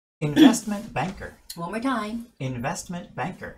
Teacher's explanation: Usually American style, the middle T just becomes kind of gone.